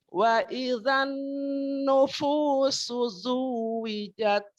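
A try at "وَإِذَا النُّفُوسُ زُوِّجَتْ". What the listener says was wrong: Ulang, nu, bukan no. Nu. Masih, jangan no tapi nu. Nu.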